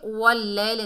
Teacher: या साकिन से पहले ज़बर है, ये जाए लीन है, नरमी से अदा करेंगे।